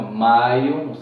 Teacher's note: A é mais forte, maio, depois vem a semivogal I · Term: ditongo decrescente